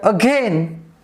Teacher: We have also 2 syllables, a is first and gain is second. So in the word single, the first syllable is stressed and the word again, the second syllable is stressed.